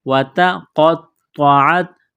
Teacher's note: قاف اور طوا کو موٹا کرنا ہے، طوا کو دبانا ہے